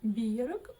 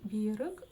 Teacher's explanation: В Казахстане вы можете услышать и биерок, ударение на первый слог, и биерок ударение на второй слог.